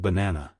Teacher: in the word of banana the stress is on the second syllable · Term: word stress, Word stress